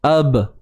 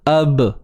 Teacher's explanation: Qalqalah sughra, tuan-tuan dan puan. Okey, lantunan yang kecil sahaja, macam kat atas tadilah wabtaghu.